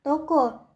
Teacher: Fonem ini mempunyai dua macam realisasi, yaitu yang pertama direalisasikan sebagai bunyi O tengah atas belakang bundar apabila berada pada silabel terbuka seperti pada kata toko.